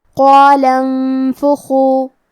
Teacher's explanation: کلمت انفخو کی شروعات میں کیونکہ یہاں نون ساکن ہے پھر حرف الفا ہے اور فا حروف الاخفاء میں سے ہے تو ہم یہ حکم کو غنہ کے ساتھ ادا کریں گے